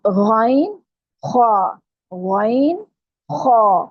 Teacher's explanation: حلق کا پہلا حصہ جو ہے جو منہ کی طرف ہے، اس میں سے 2 حروف نقطوں والے ہیں جو ادا ہوں گے، اور یہ دونوں حروف موٹے پڑے جاتے ہیں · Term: ابتدائی حلق